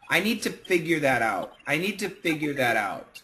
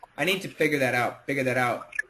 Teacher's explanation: many Americans do kind of drop that Y sound